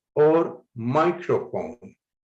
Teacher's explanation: highlighting my to show that the first syllable should be stressed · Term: word stress